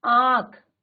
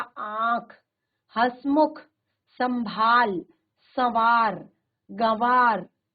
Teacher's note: इनका उच्चारण मुख और नासिका दोनों से होता है। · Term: अनुनासिक